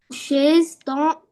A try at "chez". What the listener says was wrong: Chez, on ne dit pas chaise.